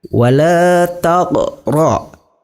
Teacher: Cara membacanya huruf qafnya agak sedikit dipantulkan. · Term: qalqalah sughra